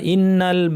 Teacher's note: নুনের উপর তাশদিদ লম্বা গুন্না